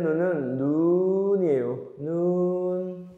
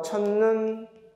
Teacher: 하늘에서 내리는 눈은 눈이에요. 눈, 길게. 하지만 이 음절을 초과하면 긴 소리가 사라집니다.